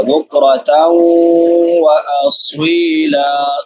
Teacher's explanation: نون تنوین کے بعد واو آ گیا ہے تو ادغام مع الغنہ ہوگا۔ بکرۃ واصیلا، صاد مستعلیہ میں سے، موٹے حروف میں سے ہے، اور سیٹی والے حروف میں سے بھی ہے۔